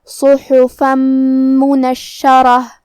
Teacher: تو یہاں حکم ہوا ادغام، تو ہم یہ حکم کو غنہ اور تشدید کے ساتھ ادا کریں گے · کلمت منشرہ شین پہ تشدید ہے، لہذا ہمیں دو حرف کے برابر حرف شین کو پڑھنا ہے